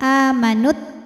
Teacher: Namun panjangnya hanya saat berhenti. Kalau wasal madnya gugur, nu-nya pendek. Amanut langsung ke ta.